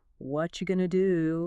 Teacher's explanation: The T and the Y smash together to make a cheese sound. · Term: connected speech